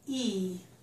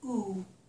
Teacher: Notice my lips are spread, e. So we have spread, e, rounded, oo.